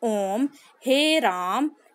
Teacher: इन स्वरों के उच्चारण में ह्रस्व स्वर से तीन गुना अधिक समय लगता है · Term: प्लुत स्वर